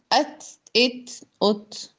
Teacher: تا میں سانس جاری ہوتا ہے. ات، اس لیے ہم تا کو ہلائیں گے نہیں.